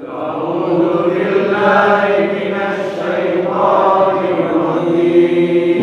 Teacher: Akhir daripada mad arid lisukun rajim kita baca 6 harakah saja ya